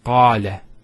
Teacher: Notice the elongation of the A sound. Qala. Not qala, qala.